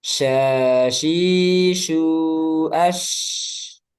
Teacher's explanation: shin dia punya sifat tafasyi, menyebar udaranya di sekitar makhraj, di mulut ya, di lidah.